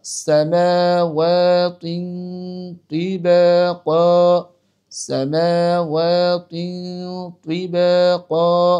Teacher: তো সেজন্য এইখানে তিনের গুন্নাটা আমাদেরকে ইকফার এই তোয়ার কারণে গুন্নাটাকে মোটা করে বলতে হবে।